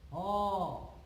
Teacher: হ উচ্চারণ করতে শ্বাসবায়ু কোথাও বাধা পায় না, কেবলমাত্র কণ্ঠ থেকে উচ্চারিত হয়ে সরাসরি চলে আসে। হ, দেখো উচ্চারণ করে দেখবে যে কোথাও কোথাও স্পর্শ করছে না, কেবলমাত্র শ্বাসনালী দিয়ে উঠে আসছে এক গরম বাতাস। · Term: কণ্ঠনালীয় ধ্বনি